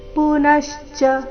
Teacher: ಪುನಶ್ಚ ನ ಮೇಲೆ ಆಘಾತ. ಈ ಶಬ್ದದಲ್ಲಿ 3 ಅಕ್ಷರ ರಸ್ವ ಇದೆ, ಅದಕ್ಕಾಗಿ ಅದರ ಮೇಲೆ ಜಾಸ್ತಿ ಹೊತ್ತು ನಿಲ್ಬಾರ್ದು.